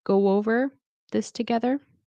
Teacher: you might hear it go over with like a W sound in between. Go over this together.